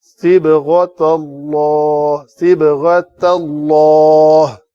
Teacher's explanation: صِبْغَةَ غین کو پر کرنے کے بعد تا کو پتلا کرنا تھوڑی مہارت ہے، کیونکہ پر کے بعد ساتھ ہی پھر پر ہو جاتا ہے کوئی کلمہ. · تا کو پتلا رکھنا ہے کہ تاکہ تو نہ بنے